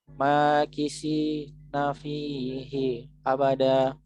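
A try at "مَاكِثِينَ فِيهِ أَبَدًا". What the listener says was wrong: Hi-nya nggak boleh berhenti. Hi-nya keliru. abada gitu. Hi abada. Fihi abada. Fi-nya melambat. Hi-nya cepat lagi gitu. Jadi melambat terus ngebut. Melambat ngebut gitu ya. melambat kisi nafi hi abada gitu.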